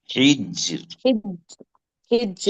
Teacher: रॉ साकिन से पहले वाला हर्फ भी साकिन है और इससे पहले हा पे जेर है, तो यहाँ पर साकिन की सूरत में रॉ बारीक पड़ जाएगी। · रॉ की आवाज हिज्र, में पुर नहीं आना चाहिए, बारीक